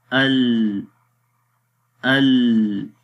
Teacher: لام کی آواز نہ تو مکمل مخرج میں بند ہو رہی تھی اور نہ ہی مکمل جاری ہو رہی تھی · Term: توسط کی صفت